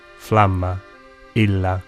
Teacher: Double consonants were pronounced long just as they still are in Italian.